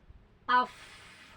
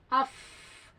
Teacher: Setelah diucapan itu suara mah tertahan tapi napas mengalir. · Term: hamas